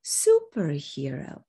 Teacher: superhero is a compound stressed on the first part · low you hear how low my tone goes at the end i'm stressing the first part and de-accenting the rest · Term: set phrase